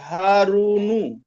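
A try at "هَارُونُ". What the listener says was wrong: হারুনু, রু কেও টান দিতে হবে।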